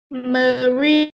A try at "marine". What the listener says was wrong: Rồi, tốt.